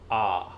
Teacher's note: जिन स्वरों के उच्चारण में मुख द्वार पूरा खुला होता है उसे विव्रत स्वर कहते हैं